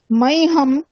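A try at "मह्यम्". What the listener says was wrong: মাইহাম না, উচ্চারণ ভুল, মাইহিয়াম উচ্চারণ ভুল, মাইহিয়াম, মাইহাম হবে না, মাইহিয়াম, হিয়া হিয়া হিয়া, মাইহিয়াম হ্যাঁ মাইহাম। যারা বলছেন মাইহাম, হম যারা যারা বলছেন সকলেই ভুল। যারা যারা এরকম বলছেন হিয়াম, তারাই ঠিক। মাইহাম মাইহাম, মাইহাম না, মাইহিয়াম,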